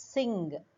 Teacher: In sing you have the na and ga sounds combined together.